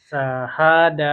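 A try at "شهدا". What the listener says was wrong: Nah, masih sa. Sya. Syahada.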